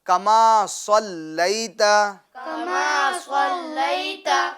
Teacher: صلیت میں جو صاد ہے اس کو تو پور کریں گے مگر جو لام ہے اس کو پور نہیں کریں گے. یعنی اس طرح نہیں صلی نہیں ہے.